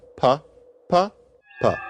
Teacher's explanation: if the consonants fall off, then you've got pa, pa, pa. The consonants are gone.